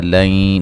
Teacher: نون ساکن کا ادغام مع الغنہ ہے